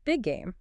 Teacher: Game starts with G. You don't say the G sound twice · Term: linking similar sounds